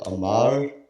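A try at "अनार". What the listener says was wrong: Okay, not Amar, it's Anar. Anar.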